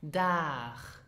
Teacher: Now, many of my students pronounced it dag or dag, which is not correct. So the final letter G is not pronounced G, but it is more pronounced as in machen, so you have the soft sound